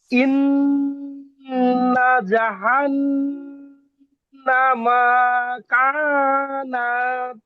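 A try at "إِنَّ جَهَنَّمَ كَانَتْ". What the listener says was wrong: এখনো মিমে টানছে, এখনো মিমে টানছে। মিমে টানছে।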